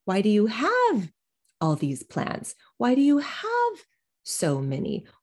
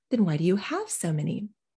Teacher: i am de-accenting so many because we've already discussed that they have a lot of plants